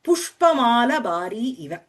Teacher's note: Here, see, if you see, no, the Pushpa Mala Bhari, the word is not Mala. The shortening of the final vowel in Mala is due to its being followed by the word called Bharin. The sutram for this is Ishtakeshika Malanam Chitatula Bharishu.